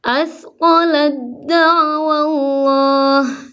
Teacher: Taknya seolah-olah tak ada langsung ke dal suaranya. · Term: idgham kamil